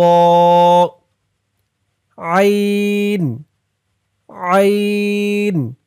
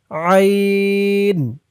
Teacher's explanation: আইনের উচ্চারণটা গলার ভিতর থেকে শক্ত হয়ে বের হবে।